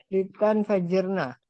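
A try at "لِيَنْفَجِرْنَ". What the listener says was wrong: Lian, bukan li.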